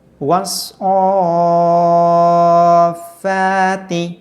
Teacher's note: واو کو لمبا نہیں کریں گے، واو کو ہم صاد کے ساتھ ملا دیں گے، وس پڑھیں گے۔